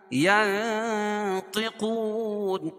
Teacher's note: وہاں ناک میں آواز کو چھپا کر پڑھیں گے